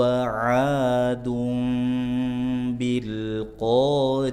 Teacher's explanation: Bil bil lam sukun izhar jangan mantul qo qi qu pangkal lidah bagian atas riah a u riah ya ta marbutah yang disukunkan maka bunyinya bunyi ha